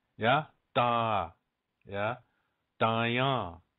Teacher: so the second word dying on just try and say that it's not quite a D sound it's almost like making a D but not quite between the T and the D